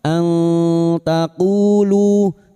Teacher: Nun sukun dibaca samar dan mendengung selama tiga harakat.